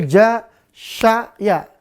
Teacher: Maka ja makhrajnya tengah lidah dengan langit-langit. Sya juga sama, ya juga demikian juga sama.